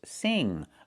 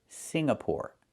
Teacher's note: The NG makes a sound in your nose.